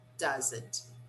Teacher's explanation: still shorter for example does not doesn't okay does not doesn't we don't clearly pronounce the t at the end of negative contractions